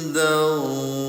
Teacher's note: Ya, bunyi n-nya disamarkan bunda. Karena ada hukum tajwid yang terjadi namanya ikhfa. Cara bacanya samarkan dan ditahan